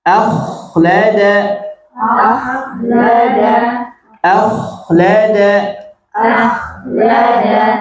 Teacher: kalau kha napas ngalir, suara ngalir dan tebal. Nah, itulah tata cara membaca kha sukun.